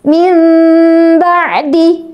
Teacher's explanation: suara bacaan mim yang berubah dari nun sukun karena pertemuan dengan ba ini ee suara mimnya samar ya. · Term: iqlab